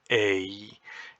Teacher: complex sound that begins in one place and ends in another it begins mid and it ends High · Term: diphthong